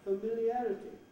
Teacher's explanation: i often hear this word familiarity with the wrong vowel in the first syllable it begins with a schwa